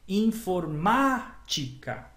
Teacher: O ma é a mais forte. Isso é uma proparoxítona.